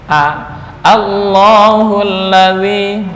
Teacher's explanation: Ini dibaca tarkik atau tafkhim untuk a ya. A tetap normal, nggak boleh dibaca o.